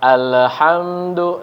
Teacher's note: Haknya tipis. Dan yang penting yang perlu diperhatikan di huruf lam. Lam sukun. Ya. Jangan sampai dipantulkan.